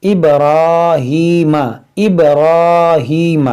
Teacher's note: और यहाँ पर देखें, बा भी साकिन है, बा हुरूफ कलकला है तो इसमें कलकला करेंगे, और रा पर खड़ा ज़बर है तो इसको मोटा भी करेंगे और इसको खींचेंगे भी